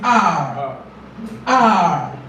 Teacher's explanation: The tongue does not touch the alveolar ridge, the roof of the mouth.